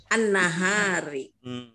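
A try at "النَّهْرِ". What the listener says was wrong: Nahri, yang benar Kalau nahar ada alifnya, nahar siang.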